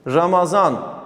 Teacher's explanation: d harfi zı şeklinde telaffuz edilir